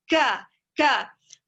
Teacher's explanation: Jadi ketika kita baca ka, keluar nafas.